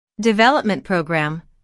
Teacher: since these two words make a compound noun the main stress falls on development